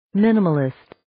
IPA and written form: 'mɪnəməlɪst (Minimalist)